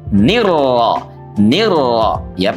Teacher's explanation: Pastikan diidgam karena di situ ada idgham syamsiyah ya.